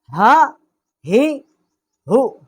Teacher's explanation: اقصائی حلق جو حلق کا سینے کی طرف والا حصہ ہے وہاں سے اس کا مخرج ہے